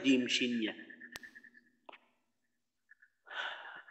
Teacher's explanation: আচ্ছা, এক্ষেত্রে জিহ্বার গোড়া বলার দরকার নেই, জিহ্বার মধ্যখান তার বরাবর উপরের তালুর সঙ্গে লাগাইয়া